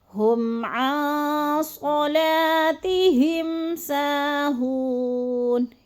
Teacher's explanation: ہم عن پہ جو ہے اخفا ہے، نون ساکن کے بعد صاد آ گیا تو ادھر اخفا، آواز کو ناک میں چھپا کر پڑھنا ہے. ہم عن صلاتہم ساہون، ہم پہ پھر اظہار شفوی، صلاتہم پہ ادھر بھی غنہ نہیں کرنا.